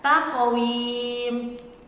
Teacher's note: ada taqwim, qaf sukun, itu juga dibaca memantul.